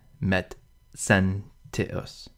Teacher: The Z is really a D and S put together, so the name Metzentius, Metz, is really Medzentius.